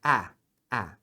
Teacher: é como se fosse um a e um e ao mesmo tempo por isso que até eles usam esse símbolo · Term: um a bem aberto